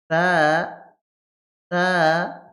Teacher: জিহ্বার আগা সামনের উপরের ২ দাঁতের আগা মিলিত হয়ে উচ্চারিত হবে। তা, তা। কিন্তু এখানে জোরে বাতাস দেওয়া যাবে না।